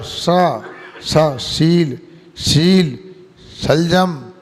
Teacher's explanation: अपनी जीभ को नाक के छेद के यहाँ ले जाओ, टा वर्ग भी ये मूर्धन षा कहलाता है ना। और संयम का सा है ना, तो जीभ को मसूड़ के यहाँ ले जाओ, दांत के ऊपर ले जाओ